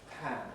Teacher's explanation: this position in english they are aspirated that is to say the explosive is followed by a brief puff of breath